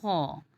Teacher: خ کا مخرج جو ہے وہ اقصی الحلق ہے، تو اقصی الحلق سے ادائیگی کے وقت ہم یہ دھیان رکھیں گے کہ زبان ہماری اوپر کی طرف اٹھ بھی رہی ہے اور خ کی ادائیگی بھی موٹی ہو رہی ہے، جیسے خ۔